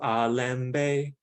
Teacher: has a low mid high tone